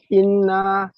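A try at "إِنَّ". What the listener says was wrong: ইন্না গুন্না হবে, ইন্না টান হবে না, ইন্না গুন্না হবে, ইন্নাল,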